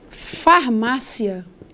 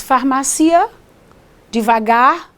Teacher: Se você pronuncia esse conjuntinho rapidamente farmácia se você não diz farmacia devagar você tem um ditongo